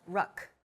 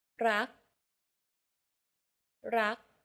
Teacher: Do you notice how air in the final K sound is not expelled? This is true for all final consonants in Thai words. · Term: unreleased